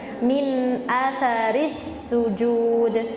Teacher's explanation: nah di situ dikata athari setelah huruf ta itu nggak ada alifnya, jadi ta-nya pendek, nggak dibaca panjang